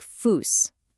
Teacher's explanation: It just makes a sharp hissing s sound. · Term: sharp S